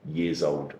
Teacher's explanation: Making sure that z links onto the o, and then you have years old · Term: connected speech